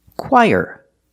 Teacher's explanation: Put the stress on the first syllable.